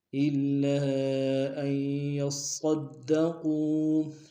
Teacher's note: الا میں لام کو شدہ زور دیں گے ، الف مدہ کو مد منفصل ہے، دو الف دار میں